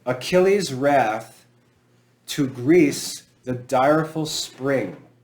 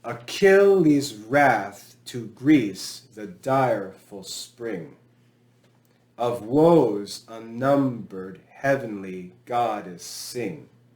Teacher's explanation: it's going to be short long short long short long short long short long or we could say no accent accent no accent accent that's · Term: iambic pentameter